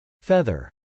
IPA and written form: fˈɛðɚ (feather)